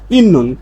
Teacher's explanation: বর্ণ পাওয়ার পরে নিউন পাইছি, তাহলে এ ত ধ্বনির উচ্চারণটা হয়ে যাবে ন, নিউন হয়ে যাবে ত ধ্বনি।